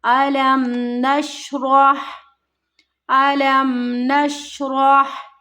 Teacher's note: गुन्ना नहीं करना, इसको मीम की आवाज़ को ज़्यादा लंबा नहीं करना। नून को शीन के साथ मिलाना है। · रॉ यहाँ पर मोटा पढ़ा जाएगा